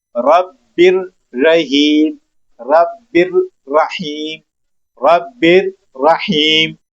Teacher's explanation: ہوئی ہے، تو اب ہم نون ساکن نہیں پڑھیں گے، اس تنوین کو ڈائریکٹ را کے ساتھ ملائیں گے، ایک تنوین ختم کریں گے، زیر پڑھ دیں گے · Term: ادغام تعام